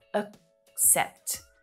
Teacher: The second syllable is the stronger one. It's clearer. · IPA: /ək'sept/, /əkˈsept/